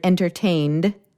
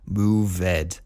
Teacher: Those words ended with a voiced consonant, so we add a D sound.